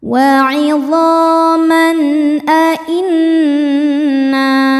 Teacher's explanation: Berikutnya ada hukum izhar halqi karena ada tanwin fathah menghadapi huruf halqi atau tenggorokan yaitu hamzah. Cara bacanya tanwin dibaca jelas.